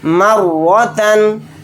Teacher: رائے مشددہ کے اوپر زبر ہے تو را کو موٹا یعنی پر پڑھیں گے